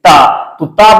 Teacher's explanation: तो ता बोलेंगे तो जीभ आपकी दांत को स्पर्श करेगी